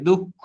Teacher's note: আগেরটা অল্পপ্রাণ হবে তারপরটা মহাপ্রাণ হবে। ওইযে দুঃখ দেখো খ দুইবার হয়নি। · ওই যে দুঃখ, দেখো খ দুইবার হয়নি, খেয়াল করেছো? যেন ক অল্প প্রাণ আসছে, পরে মহাপ্রাণ আসবে।